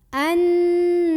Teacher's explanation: Wa'lamu anna, ada gunnah musyaddadah karena ada nun yang bertasydid. Maka cara membaca nunnya ini didengungkan dulu, ditahan kurang lebih 2 harokat.